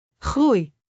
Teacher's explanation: This sound travels from, oe, to, uh, to, ie. · Start with a round, oe, open slightly to, uh, and close again into, ie.